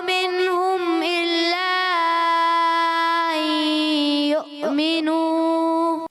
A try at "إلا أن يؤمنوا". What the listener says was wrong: آپ نے اگر کا پڑھا ان یؤمنو تو حمزہ نرم ہو جائے گا. آپ نے حمزہ تحقیق سے پڑھنا ہے خوب ظاہر کر. الا ان یؤمنو. وما نقموا منهم إلا أن يؤمنوا. إلا أن يؤمنوا بالله العزيز الحميد. ان یؤمنو. این جو پڑھیں گے نا آپ نے این تھوڑا سا اگر حمزہ کو آپ نیچے کریں گے نرم ہو جائے گا. واضح کریں. این الا ٹھیک ہے.